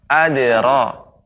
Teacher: huruf dal ketika disukunkan maka dia menjadi qalqalah. Adra, tidak terlalu cepat.